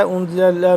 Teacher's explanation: انزل نون ساکن ہے اور اس کے بعد زا سختی سے پڑھیں گے، ذال سے جدا کر کے۔ ذال نرمی سے ہوتا ہے یہ والا، اور یہ زا ہے یہ سختی سے۔